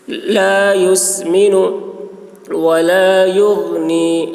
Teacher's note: غین میں قلقلہ نہ ہونے پائے، اس بات کا خیال رکھنا ہے